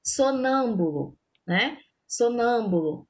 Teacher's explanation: palavra que tem a antepenúltima sílaba com sílaba tônica exemplo sonâmbulo sonâmbulo a sílaba tônica sílaba mais forte de sonâmbulo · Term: proparoxítonas